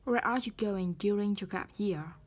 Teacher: Bắt đầu với từ để hỏi where. Ngữ điệu sẽ đi xuống.